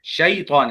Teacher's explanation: شے پڑھتے ہیں بعض لوگ، شیطان، شیطان. شے نہیں ہوتا، وہ شے جو ہوتا ہے نا وہ اردو میں ہوتا ہے، عربی میں ہوتا ہے شی. شی، شے اور شی اس میں فرق ہے.